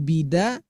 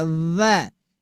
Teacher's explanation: Ujung lidah menempel di belakang gigi seri atas